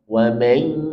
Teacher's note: Jangan sekedar wa mai bila belum masuk. Di wa mai masukkan atau naikkan ke pangkal hidung sehingga ada gunnahnya karena idgham bi gunnah dengan dengung.